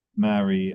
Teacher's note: So these two words, marry and marry, I transcribe differently from one another. Marry, I use the ash vowel.